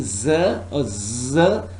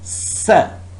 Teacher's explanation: you should feel vibration against your finger or thumb when you saying Z or Z but no vibration when you saying sir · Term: voicing